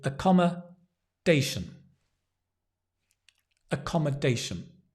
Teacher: stress on the dation